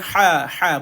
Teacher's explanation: Ha ni dia nipis. Dan dia pedas. Dia duduk di tengah kerongkong. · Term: ha pedas